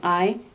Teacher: your tongue is in the highest position pronouncing I